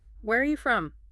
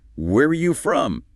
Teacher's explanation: You want your voice to go up slightly at the end. It signals curiosity, invites them to keep talking. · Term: little lift, rising tone